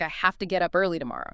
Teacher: Have to frequently becomes hafta.